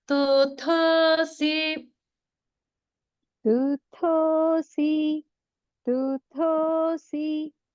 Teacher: So it's going directly from a lower swara to an upper swara.